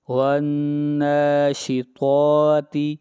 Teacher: طا حروف مستعلیہ میں سے ہے اس لیے طا کو موٹا پڑھا جائے گا اور تا کو باریک پڑھا جائے گا